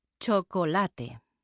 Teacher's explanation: Every syllable is pronounced in Spanish. So the final e is never silent.